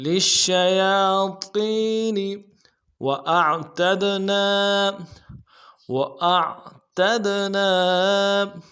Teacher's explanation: لِلشَّيَاطِينِ وَأَعْتَدْنَا واو کو نرم سے ادا کریں گے، حمزہ کو عین کے ساتھ ملانا ہے، عین کو موٹا ادا کریں گے۔ تا کو دال کے ساتھ ملانا ہے، دال کے اوپر جزم ہے، جزم کی وجہ سے قلقلہ ہوگا۔